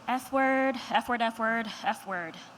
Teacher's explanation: It is produced by creating friction between the lower lip labio and your upper teeth dental without causing your vocal cords to vibrate. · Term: the F sound